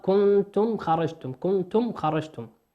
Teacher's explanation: الميم في كلمة كنتم ميم ساكنة أتى بعدها حرف الخاء، والخاء من حروف الإظهار